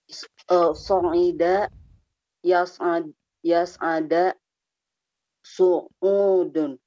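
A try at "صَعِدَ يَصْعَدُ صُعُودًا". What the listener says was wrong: Taib, so'ida yas'adu su'udun. Nah, sana kita berikan dhammah saja ya, yas'adu. Yas'adu su'udun.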